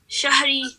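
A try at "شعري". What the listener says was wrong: Ain, not shahri.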